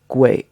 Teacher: it's almost like it has an ooh in the middle of the sound